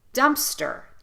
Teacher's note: we're using the uh sound in both syllables